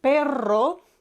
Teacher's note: perro has Double R and you need to roll it more